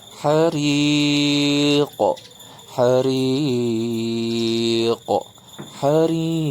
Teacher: Qalqalah kubra huruf qaf mesti dibaca mantul.